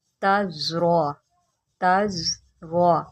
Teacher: یہاں پر دیکھیں زا ہے، اس کو سٹی کے ساتھ پڑھیں گے۔ تزرع، تزرع، را کو موٹا کر کے پڑھیں۔